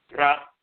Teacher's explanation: itself La the tongue is tapping the root of mouth ra the rolling R is the tongue is tapping the roof of the mouth